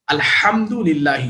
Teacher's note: हा के साथ, हा from द middle of द throat, अल्हम्दुलिल्लाही।